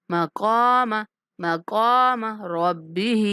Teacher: کاف کو موٹا اور کھینچ کے پڑھنا ہے